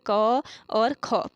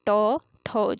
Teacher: प्रत्येक वर्ग का पहला और दूसरा जो व्यंजन होता है ये अघोष होते हैं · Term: अघोष वर्ण